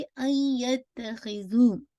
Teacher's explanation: इनकम्प्लीट तो इदगाम है, लेकिन विद मोस्ट कंप्लीट गुन्ना, अकमल गुन्ना के साथ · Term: इनकम्प्लीट मर्जिंग